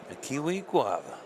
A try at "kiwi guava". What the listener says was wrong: You don't. There's no accent that needs to be put on it.